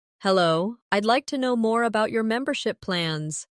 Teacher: Notice the stress on membership so it's clear what you're asking about.